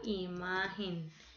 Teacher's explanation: Imagen, imagen, ma tiene en la segunda, imagen. Tiene la sílaba tónica en ma.